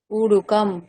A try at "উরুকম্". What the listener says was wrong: আবার উড়ুকম, আপনি দীর্ঘ করে দিচ্ছেন। উড়ুকম।